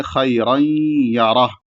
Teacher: میں ملائیں گے، یہ بھی ادغام بغنہ کی مثال ہے کہ یہاں پر بھی ادغام ہو رہا ہے اور ساتھ میں غنہ بھی ہوگا، یعنی ناک میں آواز بھی جائے گی · را کو موٹا پڑھیں گے کیونکہ اس پر تنوین ہے، زبر ہے · خیر میں خا کے بعد یا ہے تو اس کو ایک تھوڑا سا کھینچ کے پڑھیں گے ، اس کے بعد را ہے، را کو موٹا پڑھیں گے